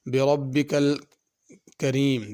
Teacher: بربک کی را پر پڑھنی ہے، کریم کی را باریک ہوگی